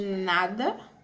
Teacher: Temos o dental ou alveolar, que é o N de nada.